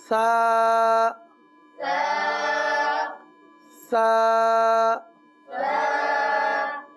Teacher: آپ کی زبان اوپر کے دانتوں کے اندرونی کنارے پر لگ رہی ہے